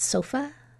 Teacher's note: you heard that uh sound and it's in an open syllable because there's no consonant sound after it